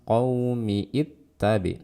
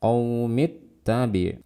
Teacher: Qaumit, jadi dari mi langsung ke ta bertasydid. Qaumittabi', jangan qaumiittabi, tapi qaumittabi'.